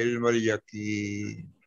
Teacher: مدہ بنی تو یقین، تو یہ یا مدہ بن کے رکیں گے تو 4-5 حرکت کے برابر کھینچیں گے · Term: مد عارض